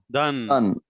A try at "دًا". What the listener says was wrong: الف ہے نا بھائی دا بولو دن کی بول رہے ہیں بولنا ہوگا نہیں بولنا کیا بولا میں آپ کو یہ جو ہے قرآن پاک میں بعض الفاظ ایسے ہیں جو لکھے جاتے ہیں لیکن پڑھے نہیں جاتے